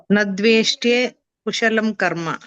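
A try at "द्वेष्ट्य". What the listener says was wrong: ದ್ವೇಷ್ಟೇ ಇಲ್ಲ ಮಾತಾಜಿ, ದ್ವೇಷ್ಟ್ಯ.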